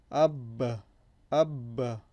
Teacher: The vibration at the end, that's qalqala. · And again, we know it's the lips. It's formed by using both lips. So the lips are where this letter originates from. It is similar to the English B, however, remember it has the quality of the qalqala.